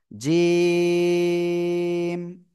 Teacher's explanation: জিহ্বার মধ্যখান তার বরাবর উপরে তালুর সাথে লাগিয়ে আমরা এই অক্ষটা উচ্চারণ করব